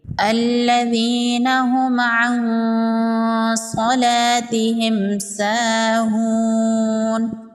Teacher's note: نون ساکن کے بعد حروف اخفا میں سے صاد ہے، یہاں پر اخفا ہوگا۔ نون کی آواز کو ناک میں چھپائیں گے، نون کا اظہار نہیں کریں گے